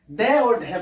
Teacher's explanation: उत्क्षिप्त का अर्थ होता है फेंका, फेंका हुआ, यानी ड और ढ बोलते हैं तो जीभ थोड़ी सी झटके से नीचे गिरती है, तो ऐसा कहते हैं ड और ढ को फेंक के बोला है, इसलिए इसको उत्क्षिप्त या फेंका हुआ व्यंजन भी कहा जाता है।